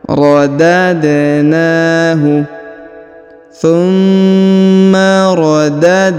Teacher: Huruf da berharokat sukun maka dipantulkan, ya.